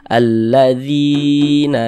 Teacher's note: Ada huruf ya, ada tanda sukun, sebelumnya ada harokat kasroh, maka huruf yang memiliki harokat kasroh ini dibaca panjang. Sehingga zi dibaca panjang. Mad tabi'i panjangnya 2 harokat.